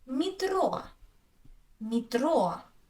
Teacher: I say и, because the stress is on o.